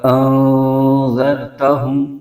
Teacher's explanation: پہلے حمزہ آ رہا ہے، اس کے بعد پھر حمزہ آ رہا ہے، تو دونوں کی آواز الگ الگ آئے گی۔